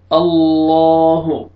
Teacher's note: لام کو موٹا کر کے پڑھتے ہیں